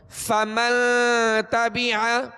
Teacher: اخفاء کریں گے اور غنہ کریں گے، اور غنہ ناک میں آواز چھپا کر کریں گے، ٹھیک ہے. غنے کی آواز کو چھپا کر کریں گے، ایک دم ظاہر کر کے نہیں.